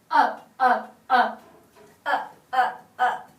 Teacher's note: she demonstrated a hard glottal attack it was dry and wet or sorry strong and dry sounding